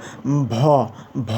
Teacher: ভ উচ্চারণ করার সময় দুইটা ঠোট ব্যতীত আর কোন কাজ হয় না। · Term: অষ্ঠ ব্যঞ্জন